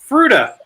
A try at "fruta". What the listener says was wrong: You put the I in there like fruit, but it's fruta. It says fruta. Fruta.